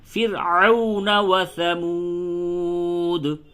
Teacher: را ساکن ما قبل کیا ہے کسرہ یعنی زیر، را کو باریک پڑھیں گے